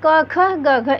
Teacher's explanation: क ख ग घ, इन चारों वर्णों का उच्चारण स्थान कंठ होता है। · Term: कंठ ध्वनियाँ